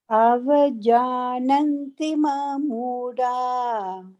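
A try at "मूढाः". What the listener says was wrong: Moodaha. There is a visarga you have to add there.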